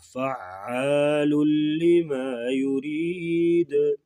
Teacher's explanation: ادغام بلا غنہ ہوگا، یعنی غنہ نہیں کر کے پڑھیں گے اور ادغام ہوگا